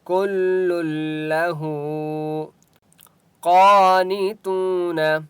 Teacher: قاف مستعلیہ میں سے ہے، اس لیے قاف کو موٹا پڑھیں گے.